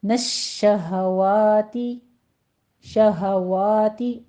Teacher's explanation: شین کے اوپر تشدید ادا کرتے ہوئے تفشی کی آواز ہوگی